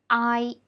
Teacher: the tongue position is actually higher than we pronounce the simple final ah